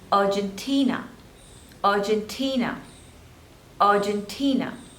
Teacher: There are total four syllables, Argentina, and the stress is on the third syllable